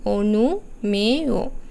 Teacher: শেষের অন্তস্থ অ এর আগে আছে এককার এখানে উচ্চারণ হবে ও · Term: সংবৃত